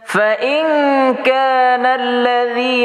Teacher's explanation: nun mati bertemu dengan Kaf hukumnya ikhfa Hakiki Sugra berdengung dua ha dua harakat ahah Jadi kalau dengungannya pakai ng